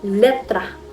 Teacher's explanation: ang hangin ay dumadaan sa gilid ng dila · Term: lateral